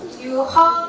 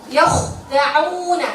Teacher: Masih yukho, dan dia punya sifat isti'la loh. Kho juga punya sifat isti'la, bukannya hanya ghaib saja. Kho terangkat.